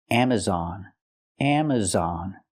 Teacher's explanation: use the open Sound ah on Amazon